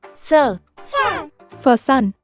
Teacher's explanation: when we say s we push air between our tongue and our teeth to make that gentle whispery sound it's a smooth swishy sound that helps us to make lots